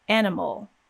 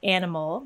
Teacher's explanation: we go directly from the m into the l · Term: syllabic consonants